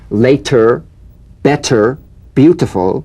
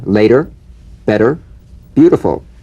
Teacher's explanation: the medial t becomes a soft d all right it's not a complete d but it goes toward